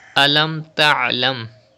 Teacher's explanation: pronounce ain from the middle part of your throat.